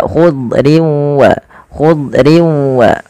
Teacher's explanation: lidah terangkat dan dia menebal Kemudian yang kedua itbaq idbaq itu lidah kita lebih melekat-lekat ke atas langit sehingga dia menebal suara huruf dadnya